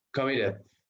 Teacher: El estrés está sobre la última sílaba al final, ¿ok? Ahí también duplicamos, porque si la mayor fuerza de voz está sobre la primera sílaba, no duplicamos nada, ¿ok?